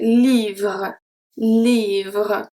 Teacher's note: If I pronounce the E at the end of livre, I will say livre, livre. So sometimes it can seem that you can hear the E at the end, but we actually don't pronounce it.